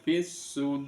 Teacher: rnya dibaca ro dibaca tafkhim tebal · Kemudian yang fis sudur itu sama, suduri dibaca sudur, itu ada mat tobi'i bertemu dengan wakof maka namanya mat aridi lisukun. Kemudian roknya dibaca rok, dibaca tafkhim, tebal